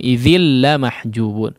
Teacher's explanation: Tanwin yang bertemu dengan huruf la maka diidghamkan tanpa disertai dengan gunnah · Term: Idgham bila gunnah